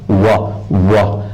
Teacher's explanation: واو عربی زبان میں ڈبلیو کے مترادف ہے. وا کے لیے دو ہونٹوں کو استعمال کرنا پڑتا ہے. یہ وی کی آواز نہیں ہے.